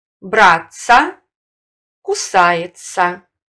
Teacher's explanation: Сочетание «ts», «ds» произносится как звук «ц» – долгий в формах глаголов с постфиксом «ся».